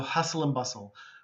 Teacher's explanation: the t in both words is quiet